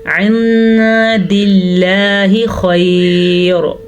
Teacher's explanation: ख्वा हमेशा ही पुर पढ़ा जाता है, ख्वा इस पे ज़बर हो, ज़ेर हो, पेश हो · लफ्ज़ अल्लाह से पीछे वाले हर्फ के नीचे ज़ेर हो तो लफ्ज़ अल्लाह को बारीक पढ़ते हैं · और रा को पुर पढ़ेंगे, क्योंकि अगर हम वक्फ़ करेंगे तो भी पुर पढ़ेंगे, वक्फ़ नहीं करेंगे तो भी पुर पढ़ेंगे। वक्फ़ की वजह से रा साकिन हो गई, पीछे देखा तो या भी साकिन थी, उससे पीछे देखा तो खा पे ज़बर थी, इस ज़बर की वजह से रा पुर पड़ी जाएगी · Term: ख्वा को पुर